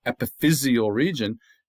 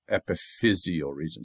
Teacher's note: now the accent moves to the 3rd syllable